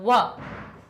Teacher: व कंठ से भी निकलती है और ओष्ठ से भी निकलती है, तो व हमारा ओष्ठ वाला वर्ग हो जाएगा व।